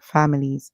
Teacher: And then S at the end makes a sound like Z. So we hear fam, il, and then we hear l, is, families.